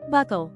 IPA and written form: ˈbʌkəl (buckle)